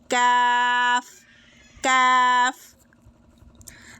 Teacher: জিহ্বার গোড়া থেকে একটু সামনের দিকে এগিয়ে ওই জায়গাটি তার বরাবর ওপর তালুর সাথে লাগিয়ে উচ্চারিত হবে কাফ